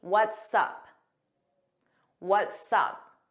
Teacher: it sounds like one word and you hear that S on what's and sup. We put it in front of up.